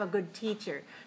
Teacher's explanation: usually the stress is on the noun, the second word, because it's adjective plus noun